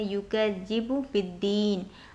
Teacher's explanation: युकज़िबु बिद्दीन, बा पर ज़ेर है, आगे दाल पर शद आ रही है तो बा को सीधे हम दाल में मिलाएंगे, जो खाली अलिफ है और लाम है वो नहीं पढ़ा जाएगा